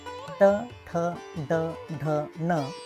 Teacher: मूर्धन्य वर्ण उच्चार करताना जिभेचा शेंडा वर वळून टाळूच्या मधल्या भागाला म्हणजेच मूर्ध्याला स्पर्श करतो